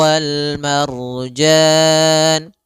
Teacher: alif lam qamariyah itu lamnya dibaca dengan jelas suara lamnya